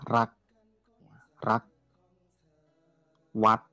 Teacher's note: itu semuanya pendek dan nada tinggi